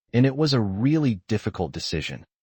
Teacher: The stressed words are really, difficult, decision.